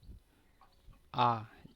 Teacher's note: विवृत simple सा है। आ, जिसमें पूरा मुंह खुल जाए उसे विपरीत स्वर कहते हैं